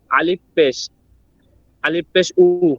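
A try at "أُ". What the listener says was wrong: আচ্ছা পেশ কোথায় পেলেন আপনি, আগে এটা বলেন। পেশ কই? জি না, উপরে হামজা লেখা আছে ছোট করে।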